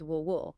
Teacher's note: the i sound in will gets reduced to a very short indistinct or schwa sound merging smoothly with the l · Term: vowel reduction